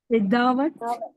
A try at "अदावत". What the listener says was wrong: नहीं, नहीं, ई तो है ही नहीं। की साउंड। अदावत।